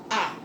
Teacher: nós temos um som cheio, sendo pronunciado livremente, sem nenhum obstáculo, nem de dente, nem de língua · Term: vogal